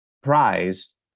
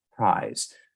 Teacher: pressure that I would exert between the upper and lower lips I might say prized with a little more force between the upper and lower lips